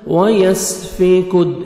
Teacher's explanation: سین کو اچھی طرح ادا کرنا ہے سیٹی کے ساتھ